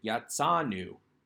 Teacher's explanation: verb the aleph has quiet completely so that we get yatsanu we get the aleph acting as though the aleph isn't even there